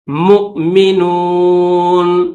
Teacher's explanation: اس حمزہ کو پڑھیں گے جھٹکا دے کر ، مؤمنون، نون کے اوپر زبر ہے لیکن اسٹاپ کریں گے